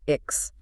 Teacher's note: The back of your tongue hits the roof of your mouth for the k · it really sounds like an E sound followed by a K and an S pushed forcefully together, Ix. Correct.